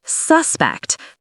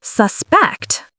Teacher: As a noun, stress the first syllable, suspect. As a verb, stress the second, suspect.